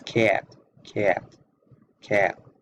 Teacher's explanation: all the vowels tend to be pronounced longer, so hence the southern drawl, as you might have heard of.